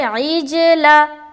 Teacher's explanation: سکون ہے، اور جیم حروف قلقلہ میں سے ہے، تو اب جب ہم عین کو جیم سے ملائیں گے تو ہم اپنی آواز کو ٹکرائیں گے، یعنی کہ قلقلہ کریں گے